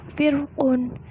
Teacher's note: bacaan ro harus dikasarkan atau dibaca tebal